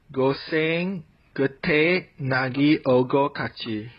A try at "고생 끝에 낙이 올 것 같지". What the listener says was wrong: this is a question, but you sounded more like you're saying something. so why don't you say 고생 끝에 낙이 올 것 같지?